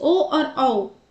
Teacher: कंठ और ओष्ठ दोनों की मदद से बोले जाते हैं। इसीलिए इनका उच्चारण स्थान है कंठ और ओष्ठ।